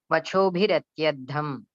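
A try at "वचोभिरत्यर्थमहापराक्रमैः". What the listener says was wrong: No, we cannot break like that. Vachobhiratyartha mahaparakramaihi. So, atha Punaha tam mahishim mahikshitaha vachobhihi atyartha mahaparakramaihi.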